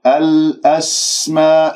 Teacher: سين ساكنة، راح أسمع الصفير ويجري فيها الصوت رخاء ويجري فيها النفس. الأسماء كلها، اجتمع حرف المد الألف والهمزة في كلمة واحدة في كلمة الأسماء، وهذا المد واجب متصل أربع أو خمس حركات.